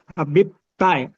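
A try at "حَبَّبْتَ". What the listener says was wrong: Habbata, bukan Habib. Habbata.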